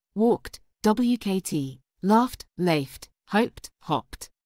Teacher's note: the Ed ending is pronounced as a voiceless T sound